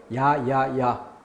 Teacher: 하나를 발음할 때 입이 움직여요. 두 단계로 소리가 난다는 증거. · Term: 이중모음